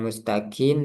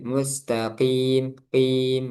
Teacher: kof itu juga nggak ada udara. Jadi dia jahar.